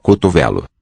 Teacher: I think the medial O, that second O in the word is also raised.